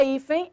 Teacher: A palavra hífen, a sílaba tônica é o i. É uma paroxítona acentuada por terminar em n.